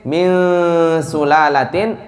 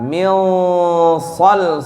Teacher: Kalau huruf setelahnya tipis, min sulalatin, maka nunnya juga tipis. Tapi kalau tebal, min sol, dia juga ikut tebal. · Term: nun ikhfa